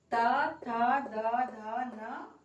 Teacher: इनको बोलते से हमारी जीभ किसको टच कर रही है, दांतों को टच कर रही है।